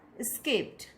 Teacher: how the past tense maker ed becomes ta